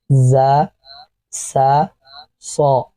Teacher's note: ان کا مخرج زبان کی نوک سامنے نیچے کے دانتوں کی جڑ سے یعنی سرے سے زبان کی نوک لگے گی اور دانتوں سے یہ حروف پڑھے جائیں گے. · ان تینوں حروف کو پڑھتے وقت سیٹی کی سی آواز آتی ہے